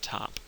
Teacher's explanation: phonetics will tell you that there's an aspiration after the T in the word top